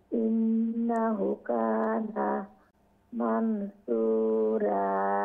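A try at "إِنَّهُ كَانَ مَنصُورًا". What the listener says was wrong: ইন্নাহু এখানে উল্টা পেশ আছে, উল্টা পেশ আপসাইড ডাউন পেশ এক আলিফ লম্বা হবে আর নুনের উপরে তাসদিদ আছে, গুন্না হবে। ইন্নাহু কানা মানসুরা। আরও একটু লং শর্টগুলো আরও একটু খেয়াল করলে মাশাআল্লাহ তিলাওয়াত সহি শুদ্ধ হয়ে যাবে।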